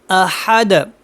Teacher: وقف ہے سیم ان کی طرح ہے، کیونکہ یہاں پہ بھی دو پیش کو ختم کر کے اس کو ساکن کریں گے اور اس کے اوپر قلقلہ ہوگا